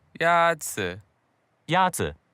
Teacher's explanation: the first tone is a high level tone